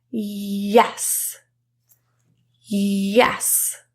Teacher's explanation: we're going to put the middle of our tongue really high create that kind of friction sound